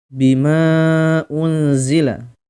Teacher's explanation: Ada mim yang panjang atau mad bertemu dengan hamzah, ya. Ini mad jaiz munfasil, ya, dibaca 4 harokat, ya, 4 ketukan, 4 lepas.